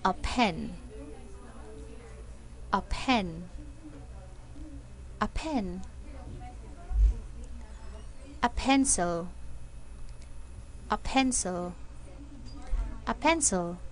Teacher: at the beginning of a word or a stressed syllable say pee with a strong puff of air